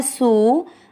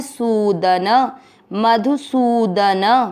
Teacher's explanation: म में अमिक्स करते हुए मधु, सु की मात्रा बड़ी लंबा खींचना है